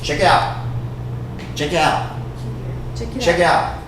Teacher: I'm not even pronouncing that t right there I'm saying it fast